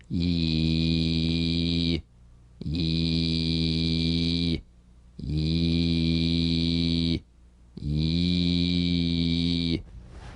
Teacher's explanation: Y buzz quickly cut off as it slides into the following vowel.